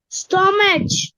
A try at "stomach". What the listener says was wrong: It's pronounced stomach. CH அந்த இடத்துல ஸ்டொமக் K மாதிரி ப்ரொனவுன்ஸ் பண்றோம். Not ஸ்டொமச், ஸ்டொமக். சில இடத்துல சிஹெச் என்று ப்ரொனவுன்ஸ் பண்ணுவோம், சில இடத்துல கே.